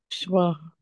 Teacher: নিচের ওষ্ঠটা উপরের দাঁতের ওখান থেকে উচ্চারিত হবে, উপরের দাঁতের পাটি থেকে ব এর মতো উচ্চারিত হবে, হালকা টাচ করে চলে আসবে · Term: অন্তস্থ ব